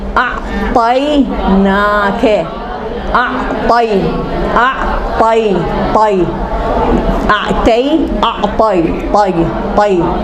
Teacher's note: دیکھو طی گول نکل رہا، منہ بن رہا ہے، موٹا نکل رہا حرف، لیکن منہ نہیں، ہونٹ نہیں گول ہو رہے